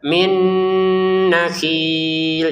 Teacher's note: Jannatum min. Nah, nun sukun bertemu nun masuk juga nun pertama kepada nun yang kedua dengan dengungan juga